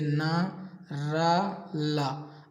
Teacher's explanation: अब जीभ देखो ऊपरी मसूड़ों को स्पर्श कर रही है इनका उच्चारण करने पर। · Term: वर्चस्व व्यंजन